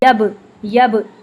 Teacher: बा को जब हम साकिन फॉर्म में पढ़ते हैं तो इस पे हम कलकला करते हैं। यब यब ऐसे डबल साउंड आती है। · با کو جب ہم ساکن فارم میں پڑھتے ہیں تو اس پہ ہم قلقلہ کرتے ہیں، یب، یب، ایسے ڈبل ساؤنڈ آتی ہے